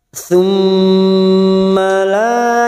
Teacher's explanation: mim yang bertasdid gunna musaddadah kita dengungkan dan ditahan selama 3 harokat. Tsumma la lam alif 2 harokat.